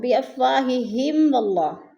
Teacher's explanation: بِأَفْوَا، الف خالی سے پہلے واو کے اوپر زبر ہے تو الف مدہ، اور بِأَفْوَاهِهِمْ، واللہ میم ساکن کے بعد واو آ گیا ہے تو ادھر اظہار شفوی ہو رہا ہے، غنہ نہیں کریں گے۔ واللہ، اللہ پر پڑھا جائے گا، اللہ سے پہلے لفظ واو کے اوپر زبر ہے تو اللہ کو پر کر کے پڑھیں گے۔